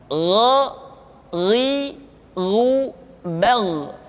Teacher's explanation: Yang selanjutnya adalah huruf gha. Diucapkan seperti kita mengucapkan huruf kha, yaitu diucapkan dari pangkal tenggorokan kita. Yang membedakannya adalah kha mengalir nafas dan gha tidak mengalir nafas.